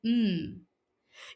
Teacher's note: When making the M sound, put your hand on your throat and you will notice some vibration. This happens because the M sound is a voiced sound.